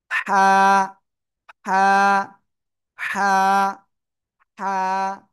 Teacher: গলার মধ্যখান চেপে হালকা একটু মুখ দিয়ে বাতাস বের করে উচ্চারণ করতে হবে।